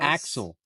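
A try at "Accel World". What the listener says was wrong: There's no X. There's no X. There's no X.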